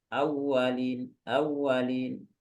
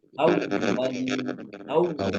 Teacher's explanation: Khusus huruf waw ini ikhwan sekalian, ketika dia bertasydid, nah itu menjadi perhatian kita untuk benar-benar menekan, menyempurnakan wawnya. Karena kalau nggak ditekan, maka nanti waw itu seolah-olah nggak bertasydid.